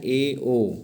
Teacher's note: अर्धसमृद्ध में मुख आधा खुला रहता है, ए, ओ, इनकी संख्या 2 होती है।